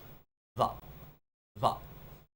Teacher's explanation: The W as well, you're supposed to pronounce it with a V with your lips and a very weak glide in the back of your throat